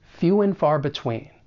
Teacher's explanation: reduce and to just n which is very common in spoken English and then we're going to link that final consonant sound and